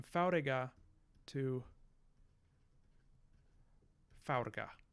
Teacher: all right and then what happens is these these intertonic vowels these vowels in the middle of the the words that are not stressed they are going to fall out